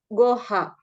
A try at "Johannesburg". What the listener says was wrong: Bukan. G itu apa G? J. Johannesburg. Kan huruf J itu dibaca apa? J. J.